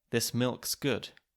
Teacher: If you think of a simple sentence like, this milk is good, the word is can be reduced to just an s. So we get, this milk's good, leaving us with a lovely cluster of ulksk.